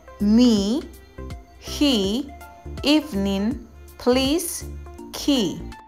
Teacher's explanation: La E también suena como I española prolongada en monosílabos o cuando va seguida de consonante y E final muda o en diptongos con la A, la E y la Y.